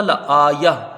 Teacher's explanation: تو وقف کریں گے تو یہاں ہوگا لا آیہ، وقف بالابدال، تا مدورہ ہا ساکنہ سے بدل جائے گی۔